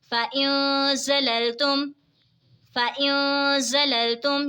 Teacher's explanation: نون ساکن کے بعد حروف اخفا کا زا ہے تو اخفا ہوگا یعنی غنہ کر کے پڑھیں گے.